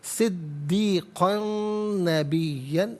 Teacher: تنوین کو نون کے ساتھ ملائیں گے، نون کی آواز کو غنّے کے ساتھ ادا کیا جائے گا